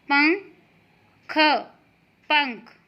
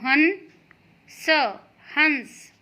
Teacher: बिंदु की जो आवाज़ होती है वो थोड़ी न से, नाक से आती है। उसका थोड़ा सा जो उच्चारण होता है, जो प्रोनाउंसिएशन होता है, वो न की तरह होता है।